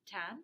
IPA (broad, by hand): tam